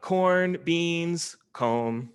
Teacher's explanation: Like when you read the word list, your final word has a falling tone. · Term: list intonation